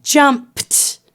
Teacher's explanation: that is not voiced the ed will make the t sound so when you say jumped the p and the t do not vibrate your throat very much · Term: unvoiced